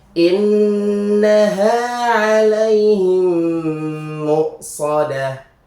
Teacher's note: seperti membaca tasydid, langsung dimasukkan ke huruf mim selanjutnya. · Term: idgham mimi